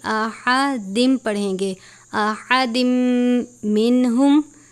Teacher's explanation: تنوین کے بعد میم مشدد ہے غنہ کرتے ہیں اور تنوین کو میم مشدد سے ملا کر ادا کریں گے یعنی احدن نہیں احدم پڑھیں گے، احدم منہم، صلے کا مطلب